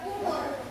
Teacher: Vokal seperti pada umur adalah tinggi belakang.